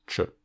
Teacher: le /t͡ʃ/ étant en l'occurrence une consonne post-alvéolaire